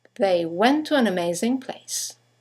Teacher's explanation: you have the semi-vowel W that connects the vowels to and an to each other.